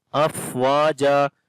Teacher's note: فا کے اوپر بھی صفت ہمس کریں گے، سانس جاری ہوگا، اف واو کو لمبا کریں گے، یہاں پر الف مدہ ہے۔